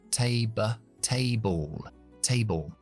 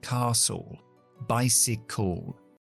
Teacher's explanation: Importante cuando veis que palabras terminan en PAL, como en este caso, o AL, o LE, o EL, siempre se pronuncia schwa, L. Nunca al o el.